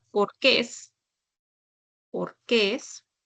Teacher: Acentúo en la última sílaba. Y acá sí voy a colocar tildes, ¿no?